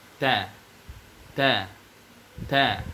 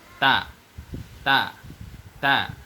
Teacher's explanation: pengucapan huruf T, dia memiliki sifat hams, atau bahasa sederhananya ada angin ketika kita ucapkan, dengan catatan, angin ini tentu tidak boleh terlalu jelas, dan tidak boleh tidak terdengar sama sekali.